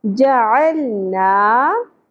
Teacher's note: ज़बर के साथ अलिफ है तो यहाँ पे हम एक अलिफ के बराबर खींचेंगे।